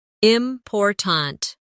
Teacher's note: in the word important, we stress the second syllable, important. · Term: word stress